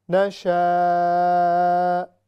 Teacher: نشاء یہاں پر بڑی مد ہے، 6 سیکنڈ تک 6 حرکات اس کو لمبا کر کے ہم نے پڑھنا ہے